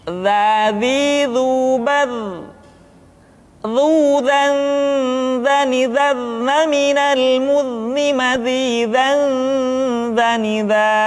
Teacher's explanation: Diucapkan dengan menyentuhkan ujung lidah dengan dinding dua gigi seri bagian atas seperti kita mengucapkan huruf tha. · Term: huruf dza